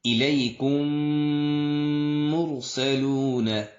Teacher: جب میم ساکن کے بعد میم متحرک آ جائے تو پھر ادغام مع الغنہ ہوگا، یعنی دونوں میم مل کر ایک مشدد میم بن جائے گا